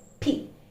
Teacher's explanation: it's a plosive, okay, literally we can listen to an explosion